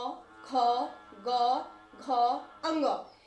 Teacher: ये वर्ण हमारे मुंह के कंठ से निकल रहे हैं, तो इसको कंठस्थ कहते हैं